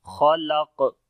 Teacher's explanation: جو قلقلہ کیا جاتا ہے وہ تھوڑا سخت قلقلہ ہوتا ہے